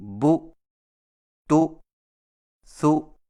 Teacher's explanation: بو تو سو کو جھٹکا دے کر بو تو سو پڑھنے سے حمزہ کی زیادتی ہو جاتی ہے